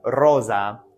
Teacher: the S makes more of a z sound in Latin the z sound does not exist like that so